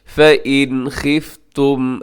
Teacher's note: नून साकिन के बाद खा है, और खा हरूफ़ हलकी के अंदर शामिल है, यहाँ भी इज़हार कीजिएगा